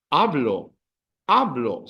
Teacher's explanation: They all end in a vowel. So the emphasis is on the second last syllable.